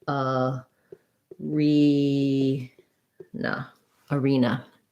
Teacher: both of those have second syllable stress so we have a clear e for the letter e